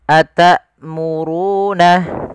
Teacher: Hamzah memiliki sifat yaitu sifat syiddah dan sifat jaharnya.